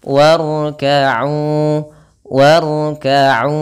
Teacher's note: Ra di sini ra-nya kita baca dengan tebal, jangan warka'u, atau jangan banyak.